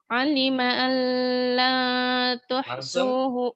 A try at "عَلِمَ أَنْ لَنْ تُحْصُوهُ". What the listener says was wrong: alima allan tanpa dengung